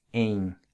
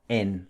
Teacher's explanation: Notice how the ''e-n'' in Portuguese is pronounced ''eng'' like it's got a ''g'' attached to it, not ''en'' like in Spanish.